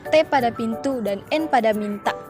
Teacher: bunyi yang dihasilkan oleh keterlibatan ujung lidah apeks dan gigi dentum atas. Caranya ialah ujung lidah sebagai artikulator dan gigi atas sebagai artikulasi. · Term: bunyi apikodental